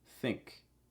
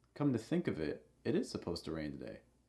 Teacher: the last word, it, you'll notice it will have a rising intonation and it will be held a little long.